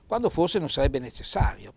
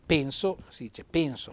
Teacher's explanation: l'accento fonico chiuso sulla e